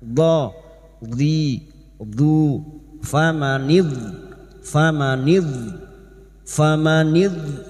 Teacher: Tepi lidah nempel pada gigi geraham atas, boleh kiri boleh kanan.